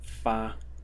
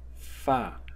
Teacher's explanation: The first one is fa in the first tone, and the second pronunciation is fa in the fourth tone.